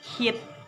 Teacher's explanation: And then the last is glotta. Glotta is the sound made in the throat between the vocal cords, such as in the word hit.